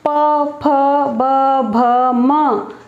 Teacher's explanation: होंठ आपस में स्पर्श हो रहे हैं, ये हो जाएंगे ओष्ठ्य।